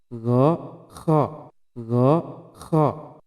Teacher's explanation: Huruf kha itu mereka melakukannya di tengah tenggorokan, padahal seharusnya di ujung luar tenggorokan, yaitu adnal halqi · Kemudian naik lagi ke ujung tenggorokan, yaitu adnal halqi, adnal halqi, yaitu ujung luar tenggorokan